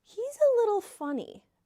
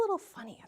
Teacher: When we use that downward intonation, it means strange.